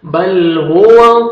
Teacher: واو پہ لپس کو راؤنڈ میں لے کے جائیں گے تاکہ واو اچھی طرح ادا ہو